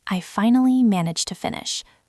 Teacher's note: A lot of learners say managed to with a very strong D sound at the end of managed. But in natural speech, that D almost disappears into the T of the word to. It sounds like one word, manage to.